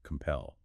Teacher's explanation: Compel. Stress on the second syllable. Pel. 2 syllables.